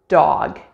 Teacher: at the front and top of your mouth when the air is released for the d sound we release less than we do for the t sound hence the smaller amount of aspiration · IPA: /d/